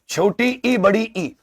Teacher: छोटी इ बड़ी ई इनका उच्चारण तालु से होता है